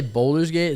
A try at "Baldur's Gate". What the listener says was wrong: Baldur's. Baldur. There's a U, not a O. Baldur. If it was Boulder, it would be with a.